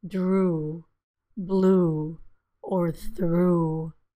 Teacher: sound I call ooh as in blue you can see that the tongue moves back and the lips are very rounded which you can see here it's a very long sound it's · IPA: /u/